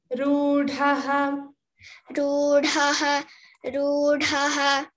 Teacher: and rudhaha, this is ru, the long u, rudhaha, dha also should be heard.